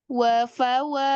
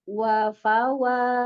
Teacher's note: istifal berarti suaranya tidak naik ke atas